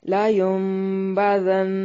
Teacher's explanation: کلا، کاف کو باریک پڑھیں گے، لا الف مدہ ہے، لا ینبذن، یہاں نون ساکن کا اقلاب مع الغنہ ہے، لا ینبذن، نون کو میم سے بدل کر پڑھیں گے۔